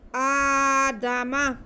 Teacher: وعلم آدم الاسماء، آدم، حمزہ پہ کھڑا زبر، آگے دال اور میم دونوں پہ زبر ہے۔ جتنا لمبا ہم نے حمزہ کو کھینچنا ہے ایک الف کے برابر